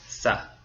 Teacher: if you want to sound more Latin America, it sounds like an S.